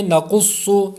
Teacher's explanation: اس میں دو حروف مستعلیہ ہیں، قاف صاد، اس لیے دونوں کو پر کریں گے